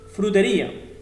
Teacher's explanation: Vocal cerrada más vocal abierta. Puedes pensar que es un diptongo, y lo es, pero la sílaba tónica recae sobre la vocal cerrada. Por lo tanto, se acentúa, se le pone la tilde y se rompe ese diptongo.